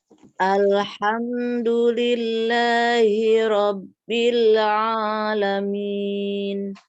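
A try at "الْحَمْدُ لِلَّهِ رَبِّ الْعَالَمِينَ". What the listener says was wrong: Nah, ini untuk dalnya. Dalnya masih terdengarnya itu jangan du ya. Hamzah itu punggung udah kita nempel pada pangkal gigi seri yang atas. Jadi kalau mau biasa memberikan di situ kita samakan dengan tak. Kalau tadi terdengar da, alhamdulillah.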